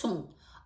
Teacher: сам по собі со іде як носовий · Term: носовий звук